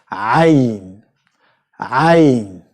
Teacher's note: It comes from the very back end of your mouth. The four letters, the hardest letters in Arabic, all of them comes from the velum of your mouth, the very very back end of your mouth.